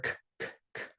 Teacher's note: this K is just like a regular K sound. It's not like the Q that comes from the back of your throat.